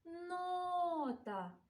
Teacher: останок давайте визначимо наголос у слові нота Давайте прикликаємо його нота наголос чуємо у першому складі